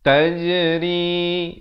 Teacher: Ri dibaca dengan nipis 2 harakat.